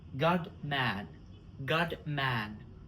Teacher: When plusive consonant come before another consonant, it becomes unreleased. For example, God man, we don't release D. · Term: unreleased plosive consonants